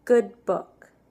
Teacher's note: Instead of letting the air burst out, kind of like almost sucking it back in.